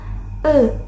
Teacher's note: dibentuk dengan lidah yang berada di posisi tengah, netral dan bibir yang rileks